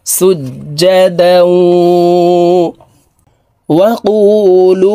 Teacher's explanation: তানউইনওয়ালা দালটি তাসদিদওয়ালা ওয়ার সাথে গুন্নার সহিত মিলাইয়া পড়তে হবে